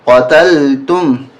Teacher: قاف زبر قا، تا لام زبر تل، قتل، تا میم پیش تم، قتلتم، قاف کو موٹا کریں